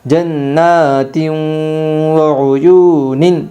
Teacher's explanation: یو وعیو نون دو زیر نن وعیون ادغام مع الغنہ ہوگا دو زیر تنوین کے بعد یمن کے 4 حرفوں میں سے واو آئی ہے، اس لیے دو زیر تنوین کو غنہ کے ساتھ پڑھے گی